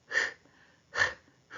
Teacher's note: 목청 사이에서 나는 소리